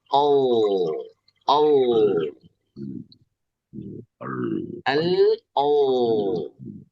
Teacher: Rumusnya bilang huruf E sama L, kemudian diangkat belakang lidah menjadi au, al, au. Nah, bunyi yang jadi tebal ini karena diangkat belakang lidah